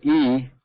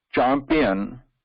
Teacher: When we want to say E, like an eat, and when we say champion, so if you notice, the difference is with E there is no touch. The air passes freely between the talu area and the top flat portion of the tongue